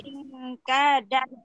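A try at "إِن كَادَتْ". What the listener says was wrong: Mantap, bagus, alhamdulillah ya. Cuman ingnya ditahan dulu. Ingkadat.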